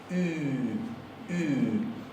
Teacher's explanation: Ponemos la boca para pronunciar una U, pero adentro de la garganta articulamos una I. · Fíjate, ponemos la boca como para una U. No cierres simplemente la boca, redondeala también. El redondeo es importante. Y atrás hace una I.